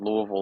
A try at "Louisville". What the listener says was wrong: You didn't say it right. You gotta close your mouth. You gotta close your mouth more when you say it. You can't move your mouth when you say it. See, you can't open your mouth.